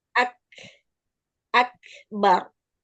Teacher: aliran udara pada nafas setelah suara tertahan pada makhraj saat menuturkan huruf syiddah dan juga dia hams yaitu pada huruf ka dan ta